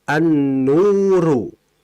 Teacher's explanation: Kalau kita masukkan lam mati, jadinya an-nuru. Sehingga lamnya tidak jelas dan dimasukkan ke huruf nunnya. Maka disebut dengan idgham asy-syamsiyah. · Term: idgham asyamsiyah